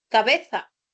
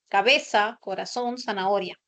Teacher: La predominancia del sonido de la fricativa alveolar sorda, o sea, el sonido de la S. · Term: ceseo